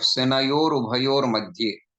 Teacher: Senayoho plus Ubhayoho becomes Senayor Ubhayor Madhye. Senayoho, that visarga gets converted into ra, and that becomes ref.